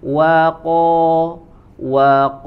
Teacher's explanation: huruf qo sempurnakan ya tebal istiala ya dan tidak boleh ada angin tidak boleh ada tidak boleh ada angin dikeluarkan ketika membacakan huruf · di huruf wa dan la-nya tetap dibaca tipis, yang tebal hanya di huruf qaf